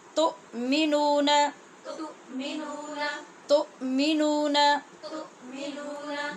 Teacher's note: اس حمزہ کا جھٹکا یاد رکھنا ہے. آواز بالکل رکے گی.